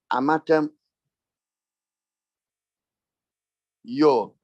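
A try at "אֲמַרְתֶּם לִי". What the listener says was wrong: Lamed Hirekiod is what? Lee. So say Lee. Amatemli. Say Amatemli. It is, you don't pause, you just add it. Amatemli. Say it.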